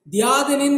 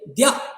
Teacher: இந்த இகரத்திற்கு முழு மாத்திரை இல்லை அரை மாத்திரை அளவே இது ஒலிக்கும் அரை மாத்திரை அளவே ஒலிக்கும் போது அதை நாம் ஒரு ஒற்றைப்போல் கருதி அந்த